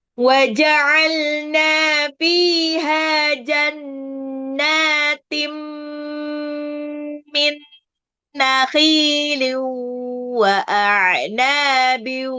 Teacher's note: jannatim tanwin ketemu mim itu adalah idgham bi gunnah